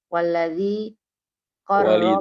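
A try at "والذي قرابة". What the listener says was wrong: walidhi, bukan waladhi. Walidhi qorobati Rasulillahi.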